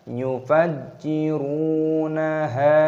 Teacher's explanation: Yufajjiru. 'Run' tersebut panjang dengan sukun 'wau'. Mad thabi'i selama dua ketukan.